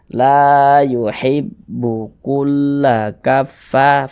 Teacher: maka huruf yang memiliki tanda baca fathah ini dibaca panjang, sehingga fa dibaca panjang. Mad tabi'i panjang 2 harokat.